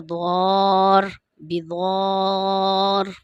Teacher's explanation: بڑی مد ہے، اس کو تقریباً 3 سے 5 الف کے برابر آپ نے کھینچنا ہے۔